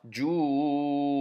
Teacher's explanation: This maddul lazim is because of this jim shadda, and this maddul lazim on this wow, ju, we have to hold it to 6 counts